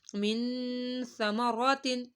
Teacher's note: سا نرمی والا حروف ہے اور حروف اخفا میں سے بھی ہے اس وجہ سے ہم نے اس پہ گنہ کیا ہے